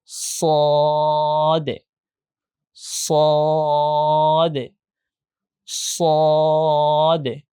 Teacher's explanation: যেহেতু অ সাউন্ড আছে তাই আমাদেরকে মোটা করে উচ্চারণ করতে হবে